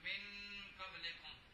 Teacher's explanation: تو اب نون ساکن کو جو ہے اخفا کر کے پڑھنا ہے